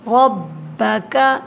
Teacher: رو کو موٹا پڑھیں گے لیکن کاف کو باریک.